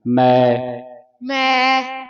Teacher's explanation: ਮੈ ਪੜਹਨਾ ਬਿੰਦੀ ਤੋਂ ਰਹਿਤ ਹੈ ਮੈਂ ਨਹੀਂ ਪੜਨਾ